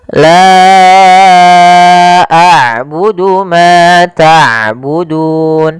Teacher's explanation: Oleh karena itu, kita memanjangkan ' la' selama empat harakat, dan kita menetapkan bacaan tersebut sebagai mad jaiz munfasil.